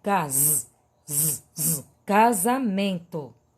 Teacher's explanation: som do z é grafado com s mas escutamos o som do z